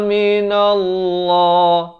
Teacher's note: Lafz jalalah dibaca tebal 2 harakat.